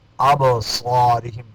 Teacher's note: ابصارہم، با میں قلقلہ ہوگا